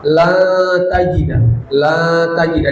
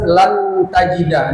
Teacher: La tajida disamarkan. Tidak dibaca jelas lan tajida. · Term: ikhfa